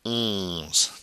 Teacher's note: Nasal sound. That O-N is always a nasal in French. Onze. Get it coming through the nose.